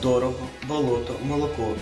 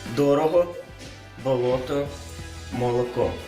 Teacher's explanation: літературній мові невластиве акання як і для більшості українських говорів наприклад у словах дорого болото молоко звук О В усіх складах однаковий під наголосом ві тільки довший та ненаголошений наприклад дорого болото молоко